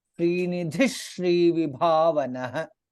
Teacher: Srinidhi, Dha is Mahaprana, followed by Shri Vibhavanah, Bha is Mahaprana.